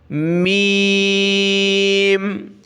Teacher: میم پر بھی ہم نے دونوں ہونٹ آپس میں ملانے ہیں، میم۔ پہلے ملیں گے الفاظ یہ ہونٹ، پھر جدا ہو جائیں گے، میم، میم، میم۔